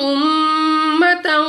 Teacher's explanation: میم مشدد غنہ کر کے پڑھیں گے، یعنی ناک میں لے جا کر پڑھنا ہے